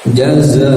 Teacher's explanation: Jaza idgham bi gunnah lagi, tanwin bertemu huruf waw, gunnahkan atau alirkan ke hidung suaranya sambil ditahan 2 harokat